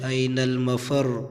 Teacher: آخری حرف ایسا ہے کہ اس کے اندر تکرار ہے جیسے را